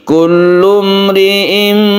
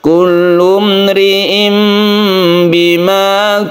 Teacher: ini Tan dibalik menjadi mim suara n menjadi m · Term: iqlab